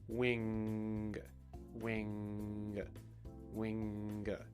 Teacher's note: when you make that last little g sound it's almost like you're holding something down and then you release it to make that kind of pop of a g sound